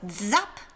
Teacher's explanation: It’s not just zzzz, it’s dzzzzz, like with a d-ish sound at the beginning.